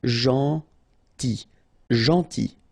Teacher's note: it's a strange one because here this final L is not pronounced.